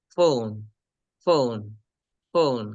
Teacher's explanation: আমরা যেটাকে নর্মালি ফ বলতাম, ওই ফ বলার সময় উপরের দাঁত নিচে ঠোঁটের সাথে মিলিয়ে বলতে হবে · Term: ফ সাউন্ডের